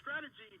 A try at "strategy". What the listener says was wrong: He said, "Why your S is so long?" How do you have a long S?